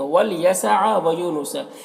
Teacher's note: یو میں واو مدہ ہے، ایک الف کے برابر کھینچیں گے۔